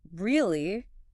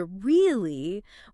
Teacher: If you say Really. with a flat, descending pitch, it communicates profound sarcasm, disbelief, or annoyance.